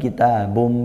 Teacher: bukan kitabun tapi kitabum, nah, langsung masuk ke mim. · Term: idgham bi gunnah